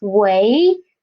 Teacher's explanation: when we use 喂, the second tone of this word, it is more about a questioning tone